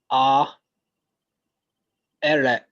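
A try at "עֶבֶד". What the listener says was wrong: Eved. This is a Daleth. This is not a Resh.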